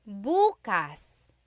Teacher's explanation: emphasis is on the first syllable that means tomorrow